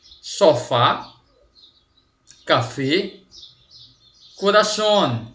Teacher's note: a sílaba tônica sílaba mais forte da palavra ela vai ser a última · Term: palavras agudas